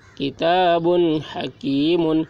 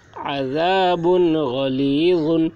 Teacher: کتاب حکیم عذاب غلیظ عین زبر ع ذال الف زبر ذا عذا با دو پیش بن عذاب غین زبر غ لام یا زیر لی غلی غا دو پیش غن غلیظ عذاب غلیظ، با کے اوپر تنوین ہے، تنوین کے بعد حروف حلقے میں سے غین آ رہا ہے، اس لیے تنوین کو ظاہر کر کے بلا غنہ کے جلد پڑھیں گے۔